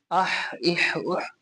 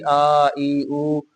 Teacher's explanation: हमज़ा साकिन को हमेशा झटका दे के पढ़ेंगे